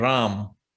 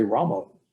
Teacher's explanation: krishna without an ah at the end krishna and ram not it would not be rama there rama